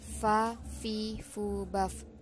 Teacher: sedangkan dental berarti gigi konsonan labiodental Ini bibir bawah yang dimaksud bibir bawah bekerja sama dengan gigi atas untuk menghambat udara yang datang dari paru